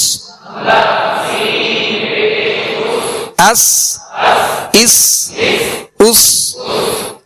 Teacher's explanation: سین کو سیٹی کی آواز میں سختی سے ادا کریں گے